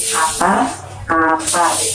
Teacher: konsonan hambatan yang ini dilafalkan dengan kedua bibir dengan bibir atas dan bibir bawah itu tekan atas ke atas sehingga udara dari paru-paru itu tertahan